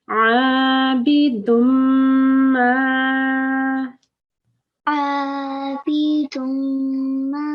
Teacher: This is the ghunna, the nasalization of the meme. And in order for you to do it, you have to hold on to the meme. There are two memes there, and you have to hold on to the first one.